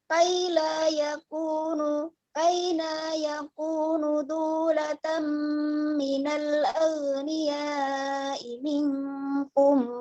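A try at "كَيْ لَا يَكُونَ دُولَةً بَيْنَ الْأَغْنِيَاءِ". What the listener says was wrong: Kaila yakuna. Bainal. Bukan min ya. Bainal. Bainal.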